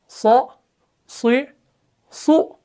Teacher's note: आवाज का इन्हिसार जुबान और तालु के दरमियान होना, जिसकी वजह से ये हरूफ और ज्यादा मोटे हो जाते हैं